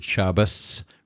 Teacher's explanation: if you hear um an ashkenazic speaker uh you you hear the word shabas rather than Shabbat and that's why because the the ending T does not have